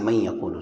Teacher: نون کو یا کے اندر ملا دیں گے، داخل کر دیں گے، نون پڑھنے میں نہیں آئے گا۔ من یقولو یہ غلط ہو جائے گا، من یقولو یہ غلط ہے۔